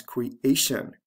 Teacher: words usually falls on the second syllable so create becomes creation the stress remains on the second syllable